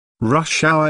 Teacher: notice that rush hour is a compound noun with the main stress on the first word